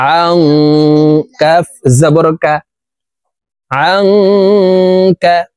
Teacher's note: ضاد عين زبر ضاع، نون ألف زبر نا، ووضعنا আইন নুন জবর আং, ইকফা গুন্না, নুন সাকিনের পরে ইকফার হরফ কাফ আসছে, এই কারণে এই নুন সাকিনকে নাকের ভিতরে লুকাইয়া গুন্নার সহিত পড়ব।